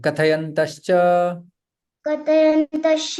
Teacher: विसर्ग का श में परिवर्तन हो जाता है